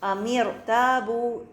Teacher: ایک اور مثال دیکھیے، دو الفاظ ہیں ام اور ارتابو، جب ہم ان کو ملا کے پڑھتے ہیں ام ارتابو، یہاں پر دیکھیے رو ساکنہ ہے، اس سے پہلے حمزۃ الوصل ہے، لیکن ہم چونکہ ملا کے پڑھ رہے ہیں لہٰذا ہم اس حمزۃ الوصل اور اس کے کسرہ کو نہیں پڑھیں گے